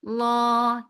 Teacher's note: make lam heavy and make it 2 counts long.